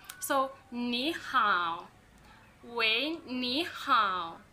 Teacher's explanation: when two third tones follow each other, like ni hao, those are two third tones. The first third tone changes to the second tone.